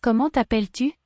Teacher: The T at the end of comment is silent.